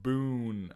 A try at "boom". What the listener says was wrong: Boon? Or boom. You're saying that with an N?